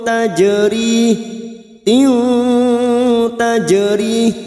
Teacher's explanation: Jim sukun qalqalah sugro yang mati asli di tengah kalimat jangan lupa dipantulkan. · Kita samarkan bunyi kasrah tanwin dan mendengung selama 2 atau 3 harokat. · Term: ikhfa hakiki